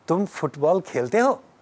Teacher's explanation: If you are putting the rising intonation on the verb खेलते हो, that is what makes it sound like a question.